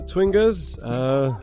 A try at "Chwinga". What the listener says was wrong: Again, you're saying Twingas. Ch.